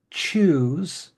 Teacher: we don't often have a soft CH sound even when we use the word choose there is a TCH sound there so you'll hear that much more commonly in English than you